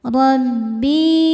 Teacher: Ro dibaca tafhim karena berharakat fathah maka rnya tebal. Rbi bi mad thobi'i zohiri karena ada ya sukun sebelumnya kasrah. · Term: tafkhim